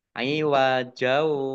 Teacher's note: Ghoin domah wawu sukun mat tabi'i hak fathah alif mat tabi'i masing-masing dibaca panjang 2 harokat. Aiwajau fathah tanwin bertemu dengan huruf wawu bacaan idgham bi gunnah